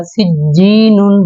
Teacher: آگے اگر دوسرے جیسے یہ جیم کے بعد یہ شد آئی، ہم نے یہاں پہ غنہ نہیں کیا، سجینن، بس جیم کو ہم نے تھوڑا زور دے کر پڑھا تھا، ٹھیک ہے۔ ایسے ہی ہم نے یہاں پہ پڑھا تھا با کے بعد یہ شد آئی تھی تو ہم لحبل، تھوڑا سا ہم نے اس کو زور دے کے پڑھا تھا۔